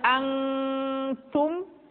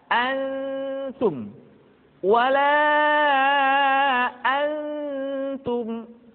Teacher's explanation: Ketemu dengan ta misalkan, tidak dibaca angtum, tetapi posisi lidah sudah berada pada makhraj huruf ta. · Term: ikhfa